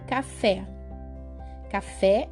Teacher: última sílaba da palavra é a mais forte por exemplo café café é uma palavra oxítona porque a última sílaba fé é a mais forte da palavra